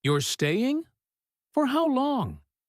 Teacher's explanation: Notice how quickly that question fires out, staying rising sharply, almost breathless, and for how long following right behind it without much pause at all, the two questions almost tumbling over each other.